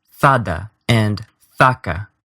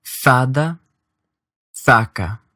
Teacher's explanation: This is easiest to hear when you listen to words that have both of these vowels, like fada and faca. The second vowel here is short, weak, unaccented, and has a tongue position a little bit higher up in your mouth.